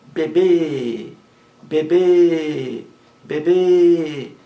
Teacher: beber é uma palavra oxítona a sílaba mais forte a última